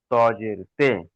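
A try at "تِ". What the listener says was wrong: জি না, তজের তি, তে হবে না, তি।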